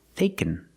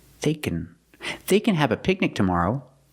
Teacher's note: Don't stress can because it's positive.